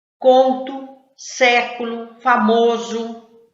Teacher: palavras que terminam com o mas tem som de u